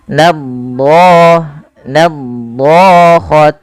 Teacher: itbaq lidah melekat-lekat dengan langit-langit atas, maka dia menebal.